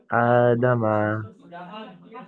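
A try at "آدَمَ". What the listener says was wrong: আ দামা, বেশি করে টান দেবেন।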